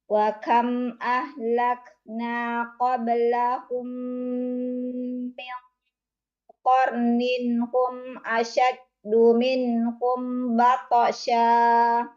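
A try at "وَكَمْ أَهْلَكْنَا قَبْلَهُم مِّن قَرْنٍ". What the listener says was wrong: Qablahum jangan masuk kalam. Qablah pisahkan.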